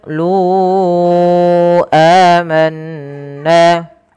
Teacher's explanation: Kemudian lu amanna pada lafal qolu lunya kita panjangkan empat harakat teman-teman karena di sini ada bacaan mad jaiz munfasil yang di mana adanya mad thabi'i bertemu dengan hamzah setelahnya. Pada dasarnya lu panjangnya dua harakat karena ketemu hamzah dan hamzah tersebut terpisah maka dia dipanjangkan empat harakat. Dan inilah yang dinamakan dengan mad jaiz munfasil.